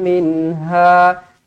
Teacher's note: Minha, nun mati izhar halki, disebut dengan jelas.